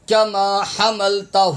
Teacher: الف خالی نہیں پڑھنا، یہ ہا زبر ہا ہے، اس میں ہا کی آواز آئے گی